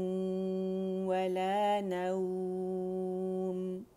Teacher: میم پہ دونوں جو ہمارے لپس تھے خشک سے وہ جوڑ دیے